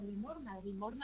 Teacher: No pronuncia esa S implosiva de 200. En limosna, pronuncia algún tipo de aspiración, o a lo mejor pronunciaba incluso rotacismo